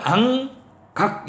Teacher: 이응과 기역이 있었죠. 이거는 혀 뒷부분이 닿더라. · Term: 여린 입천장 소리